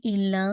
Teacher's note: ال اور لا کو آپ نے 2 کاؤنٹ اسٹریچ کرنا ہے کیونکہ یہ الف مدیہ ہے